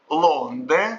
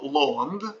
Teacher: сужение гласного а перед носовыми встречается